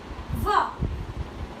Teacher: व दांत और ओट दोनों को मिला रहे हैं हम · ठीक है, कि व को जब हम बोलेंगे तो बोल के देखिए, व दांत और ओष्ठ दोनों को मिला रहे हैं हम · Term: दंत कोषम, दंत ओष्ठम